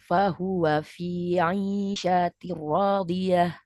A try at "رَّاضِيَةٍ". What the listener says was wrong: Tambah tebal, radi. Ya, radiyah.